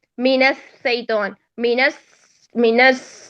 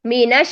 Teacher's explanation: شین کی ایکسٹرا جو کوالٹی تھی وہ تفشی تھی جس نے اس کو مختلف کیا ہے سین سے. اگر ہم تفشی ادا نہیں کرتے تو وہ سین کی طرف چلا جائے گا.